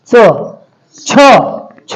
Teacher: च म्हणताना बघा तुमची जीभ टाळूला लागते आणि जोर द्यावा लागतो च छ छ म्हणताना सुद्धा जोर द्यावा लागतो ज्या व्यंजनांचा उच्चार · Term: कठोर व्यंजने